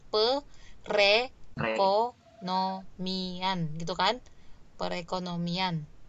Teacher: Nah jadi re dia, berarti bergeser ya, R-nya bergeser ke depan. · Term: penggeseran